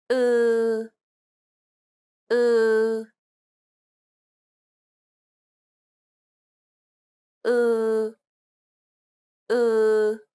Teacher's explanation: It's like an unrounded u sound. Be sure to lengthen the vowel sound.